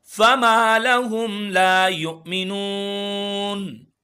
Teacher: فما ایک الف کے برابر کھینچیں گے. لا ایک الف کے برابر.